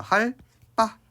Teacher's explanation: 뒤에 오는 얘가 된소리가 오는 경우들이 있는데 자, 하다가 아니라 리을이라는 전성어미가 오고 바가 이제 온단 말이에요. 그래서 할, 빠 이렇게 된소리가 되는 경우들이 있어요.